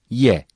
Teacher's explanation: yazılmıştır bazen ayrı ayrı bazen de la diye uzatılarak okunur y dil ortasının Üst damak ortasına dokunmasıyla çıkar açık yumuşak ve ince bir sesle okunur